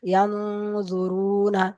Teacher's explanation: দেখেন এখানে নুন সাকিনের পরে হুরুফে ইকফার 15টি অক্ষরের মধ্যে ফা এসেছে। তো নুন সাকিনের আওয়াজকে নাকে তুলে একালি পরিমাণ গুণনা করে পড়তে হবে, একে ইকফা বলে।